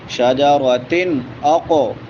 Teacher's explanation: تا کے نیچے تنوین ہے، اور اس کے بعد حروف حلقی میں سے حمزہ ہے تو یہاں پہ اظہار ہوگا